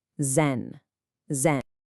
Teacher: And finally, and this is a big one, the third tone on zen. It's a dipping tone. You can't just say it low and flat. It has to go down and then come back up. Think of the shape of a check mark or a little scoop.